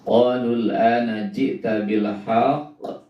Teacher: Bil haqq kalau dihentikan maka itu adalah menjadi qalqalah kubra. Karena huruf kolahnya ada di ujung kalimat, di akhir, dan hurufnya hidup, ya.